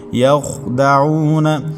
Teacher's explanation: وما یخدعون، وما واو متحرک، میم کے بعد الف مدہ، ایک الف تک کھینچیں گے۔ یخدعون، خوا حروف مستعلیہ میں سے ہے، موٹے حروف میں سے ہے، اس کو پر پڑھیں گے · یخدعون، خوا حروف مستعلیہ میں سے ہے، موٹے حروف میں سے ہے، اس کو پر پڑھیں گے۔ عین کو حلق کے درمیان سے ادا کریں گے۔ عین کے بعد واو ساکن، اس سے پہلے عین کے اوپر پیش ہے تو یہ واو مدہ ہوگی، ایک الف تک کھینچیں گے۔